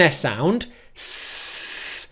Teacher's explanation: We start by making an S sound, s, where our lips are flat.